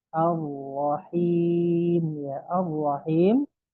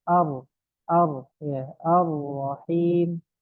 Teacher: Itu ro-nya ada tasydidnya. Ya, lamnya tidak dibaca kan? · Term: idgham kamil